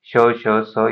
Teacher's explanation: याचं घर्षण होतं आणि उष्मा बाहेर पडते उच्चारताना म्हणून हे श, श, स याला उष्मे म्हटलं जातं